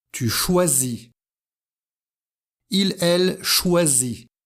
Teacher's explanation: S se prononce Z parce qu'il y a une voyelle avant et une voyelle après. Dans ces cas-là, S se prononce Z.